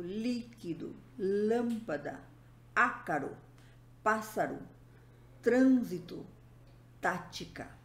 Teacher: palavras onde a antepenúltima sílaba é tônica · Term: proparoxítonas